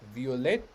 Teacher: consonants then we have violete we have a double t so i'm going to let my tongue go to the t stay there and then depart